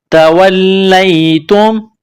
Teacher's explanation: واو کو لام کے ساتھ ملانا ہے، لام میں سختی کرنی ہے ، لام کو یا کے ساتھ ملائیں گے، تا کو میم